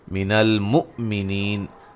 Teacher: مع ادغام ہے، ٹھیک ہے جی، غنے کے ساتھ، من المؤمنین حمزہ کو جھٹکے سے ادا کریں گے